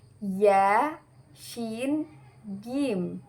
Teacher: ada pada tengah-tengah lidah bertemu dengan langit-langit atas